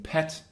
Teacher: a mid kind of front sound would be e as in pet